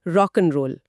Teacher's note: एंड का उदाहरण भी है जो पूरी तरह एंड ना होकर अक्सर सिर्फ एन या कभी-कभी बस एन रह जाता है। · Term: कमजोर रूप